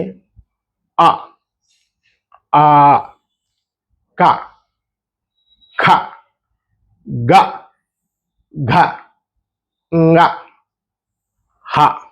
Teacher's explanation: ఇవి కంఠంలో నుంచి పుడతాయి